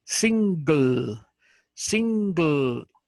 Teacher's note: Lo que hago es que hago sing, ahí la lengua se me pega al paladar y luego hago la gl. O sea, jalo, como dice la lengua, un poquito para abajo y subo la punta de la lengua al paladar y suena single.